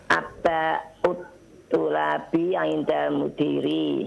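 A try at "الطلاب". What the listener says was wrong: Tullabi, lamnya musyaddadah.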